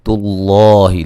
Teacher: لفظ اللہ کو موٹا ادا کریں گے، اس سے پہلے پیش ہے اور یہ مد اصلی ہے.